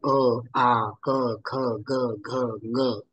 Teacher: या वर्णांचे कंठ हे उच्चारण स्थान त्यांचे उच्चारण कंठ याच उच्चारण स्थानातून होणे आवश्यक आहे